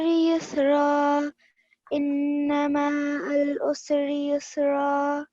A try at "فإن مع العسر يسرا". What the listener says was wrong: Yeah, so you have prolonged ma for 2 seconds, but it's only a stroke. It's just 1 second fatha. So it will be أعوذ بالله من الشيطان الرجيم بسم الله الرحمن الرحيم فإن مع العسر يسرا